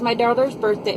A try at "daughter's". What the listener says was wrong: But my dirty. It sounds like you're saying dirty.